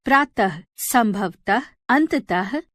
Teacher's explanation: विसर्ग का उच्चारण ह की तरह ही किया जाता है।